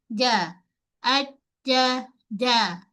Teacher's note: Sifat jim tak ada angin. Pada jim, kita sentuh terus bahagian tengah lidah kita ni dengan lelangit keras.